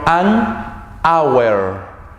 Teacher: Aquí la H no tiene sonido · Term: H silenciosa